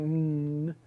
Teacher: Well, N is voiced, and it's a stop in the sense that you are stopping the air from flowing through your mouth. If you think about what's happening inside your mouth during an N, your tongue is jammed against your alveolar ridge, just as it would be for a T.